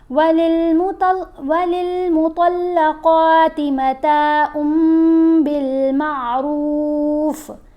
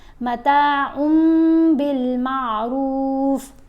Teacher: جب بھی نون ساکن یا نون تنوین کے بعد حرف با آئے گا تو ہم نے نون کی آواز کو میم کی آواز سے بدل کر پڑھنا ہے، یہ اقلاب ہوتا ہے.